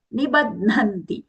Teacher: The ba is alpa prana.